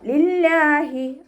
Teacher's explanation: ഹ എന്നുള്ള അക്ഷരത്തിൻ്റെ സൗണ്ടിനെ തൊണ്ടയുടെ അവസാന ഭാഗത്തു നിന്ന് കൊണ്ടുവരിക. ഹംസയുടെ സൗണ്ടായി പോവാതെ നോക്കുക.